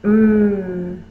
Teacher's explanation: my lips are closed the air comes through my nose